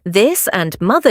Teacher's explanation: use a voiced, buzzing TH.